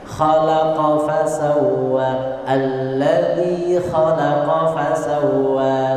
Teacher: Khalaqa pendek semuanya. Khalaqa fa pendek semuanya, tidak ada tasydid.